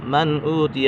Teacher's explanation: من اوتیہ، من اوتیہ، یہاں پر اظہار حلقی ہے، نون ساکن یا تنوین کے بعد حروف حلقی میں سے کوئی بھی حرف آ جائے تو اظہار ہوگا، یعنی غنہ نہیں کریں گے، یہاں پر غنہ نہیں ہوگا